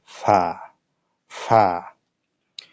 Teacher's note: নিচের ঠোঁটের পেট উপরের দাঁতের আগার সাথে লাগিয়ে একটি হরফ উচ্চারিত হয়